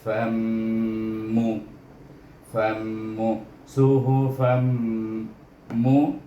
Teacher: Kemudian fa baris di atas bunyi fan, tetapi tanwin ini bertemu dengan mim yang bertasydid, maka kita matikan dia, idghamkan dia dengan huruf mim